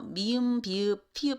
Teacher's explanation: 두 입술이 만나서 발음이 되는 거거든요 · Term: 양순음